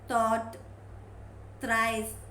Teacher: It is voiceless, interdental